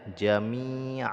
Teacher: ketika diwaakaf dia dibaca fathah saja dua harakat disebut dengan mad Iwat